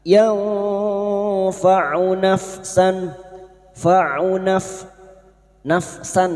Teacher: Kita samarkan bunyi nun sukun dan mendengung selama tiga harakat. Yanfau nafsan fau naf nafsan fathah tanwin bertemu hamzah idhar halqi. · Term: ikfa hakiki